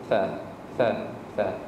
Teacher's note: Yang pertama huruf tha. Hujung lidah kita bersentuhan dengan hujung gigi atas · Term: huruf lisawiyah